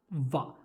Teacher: जो आपके होंठ हैं वो आपके दांतों को टच करेंगे, यानी आपके जो होंठ हैं वो आपके दांतों को टच करेंगे। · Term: दंत ओष्ठ